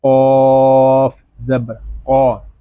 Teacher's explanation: قاف حروف مستعلیہ میں سے ہے، اس کو پر پڑھیں گے